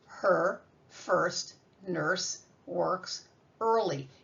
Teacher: you don't say the vowels at all. They're silent because the R swallows up that vowel. He controls it.